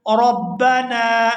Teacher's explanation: یا نون کو الف مدہ کی وجہ سے کھینچ کر ادا کریں گے